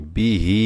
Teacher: এটা এক জের আর এটা খারাজের। এক জের তাড়াতাড়ি পড়তে হবে, খারাজের এক আলিফ টান দিয়ে পড়তে হবে। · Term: মদের হরকত